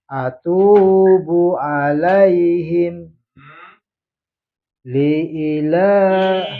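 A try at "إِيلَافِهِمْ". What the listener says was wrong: Panjang. Ila tidak panjang, tapi yang i-nya panjang. Nah, li ila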